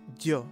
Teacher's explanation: It sounds like j, but a little more palatalized.